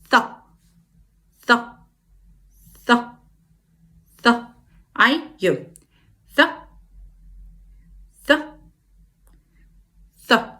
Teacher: We take again the tip of our tongue and we stick it a little bit from our mouth, and it's touching our front teeth just a little bit like this. And then we bring our tongue back to our mouth very quickly, very abruptly, and we have the sound th